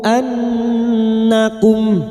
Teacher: nun yang bertasdid gunnah musyaddadah kita dengungkan selama 3 harokat